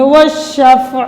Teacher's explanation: عین کے نیچے حرکت ہے، زیر ہے، تو زیر کو ہم جزم میں بدل کر وقف کریں گے